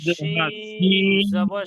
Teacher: শিন জিবের মাঝখান দিয়ে উচ্চারণ হবে